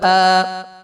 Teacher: کھڑے زبر کو ایک الف کے برابر کھینچ کر پڑھیں، کیونکہ کھڑا زبر حرف مدہ الف کے قائم مقام ہوتا ہے